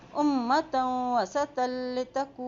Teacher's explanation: یہاں دیکھیں میم کے اوپر شد ہے. جب میم پہ شد آتی ہے وہاں غنہ ادا کرتے ہیں. یہاں غنہ ادا کریں گے.